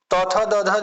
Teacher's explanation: तथ दध दंत से बोला जाता है दांत से